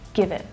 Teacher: notice how it's unstressed, so it reduces down to the schwa sound, give it. And also that T is a stop T, which means that I'm not fully pronouncing it, I'm not letting the air go afterwards. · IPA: ə